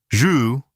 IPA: ʒ